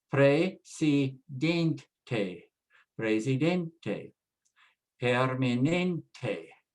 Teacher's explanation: So for example, the word president ending in ENT, all we have to do is add an E and it becomes a Spanish word. Now, because it now ends in a vowel, we have to put the stress on the second to the last, next to the last syllable